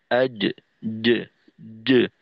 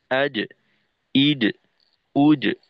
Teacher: আর এখানে যেহেতু কলকলা, সুতরাং ওর মাখরাজ থেকে পৃথক হওয়ার সময় একটা ফিরতি আওয়াজ হবে, প্রতিধ্বনি থাকবে